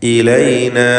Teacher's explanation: ഇലൈന, ഇതിലുള്ള അലിഫിൻ്റെ ദീർഘം മദ് മുൻഫസിൽ ജായിസാണ്. 4-5 ഹറക്കത്തിൻ്റെ അളവിൽ ദീർഘിപ്പിക്കുക.